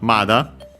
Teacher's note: usually with accent on the ma, on the first mora